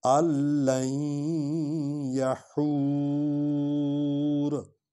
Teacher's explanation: آگے یا پر شد ہے تو نون کو نہیں پڑھیں گے، یا کو پڑھیں گے